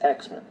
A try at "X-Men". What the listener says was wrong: Oh, yeah, you say it like it's their last name. Like, oh, yeah, those are the Williamses and the X-Men. Hi, I'm Bob X-Men.